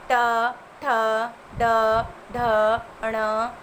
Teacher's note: इनका उच्चारण स्थान मूर्धा होता है और मूर्धा का उच्चारित वर्ण मूर्धन्य कहलाता है।